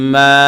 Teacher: প্রিয় দর্শক, কোরআন শিক্ষা কোর্সের যে 6 নম্বর ক্লাস আমি করিয়েছি, সেখানে আলোচনা করেছি মদের হরফ সম্পর্কে, যে জবরের বাম পাশে খালি আলিফ হলে, জবরের বাম পাশে খালি আলিফ হলে সেটা হলো মদের হরফ। মানে এই জবরকে এক আলিফ টান দিতে হবে